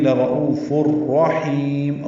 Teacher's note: حا وسط حلق سے ادا کریں گے